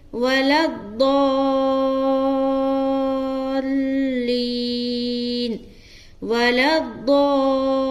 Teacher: ضاد کو مد کے ساتھ کھینچتے ہوئے لام میں بھی ملانا ہے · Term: مد لازم